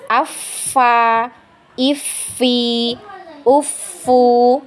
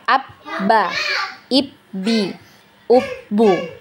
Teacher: Kalau sifat rokhwa dia mengalir, sedangkan syiddah itu tertahan aliran suaranya.